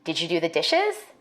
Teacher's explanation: For white speakers, we expect a rising tone in questions like these.